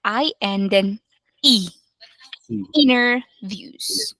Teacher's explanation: after n you will not say the sound of T so it's not interviews anymore it will just be inner